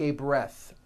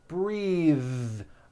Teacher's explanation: th is voiced bathe like in bathing suit breathe same thing breath is a noun take a breath unvoiced but when you change it into a verb the vowel changes and it becomes breathe I am breathing with a voiced th now let's do some